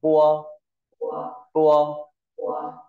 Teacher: ta sẽ có âm môi môi nên là môi trên phối hợp với môi dưới